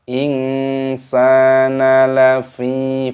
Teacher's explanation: Fa-nya dibaca panjang, ada ya sukunya.